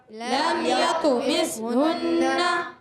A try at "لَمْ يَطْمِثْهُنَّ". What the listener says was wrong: غنہ پورا کریں گے۔ لم یطمثہن، نون مشدد میں ہمیشہ ایک الف کا غنہ ہوتا ہے، ٹھیک ہے؟